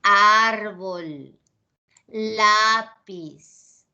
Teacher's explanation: la fuerza de voz incide en la penúltima sílaba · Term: graves